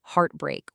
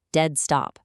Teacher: Two completely stressed syllables placed back-to-back. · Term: spondee